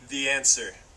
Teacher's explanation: it sounded like there is a Y between them